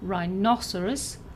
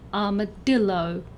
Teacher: of these words have four syllables for all of these words the stress is either on the second syllable as in rhinoceros or the third syllable as in armadillo